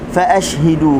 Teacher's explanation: Okey, fa ashhidu alaihim, fa ashhidu huruf shin, fa lepaskan suara, lepaskan angin, lepaskan tafashi yang ada pada huruf shin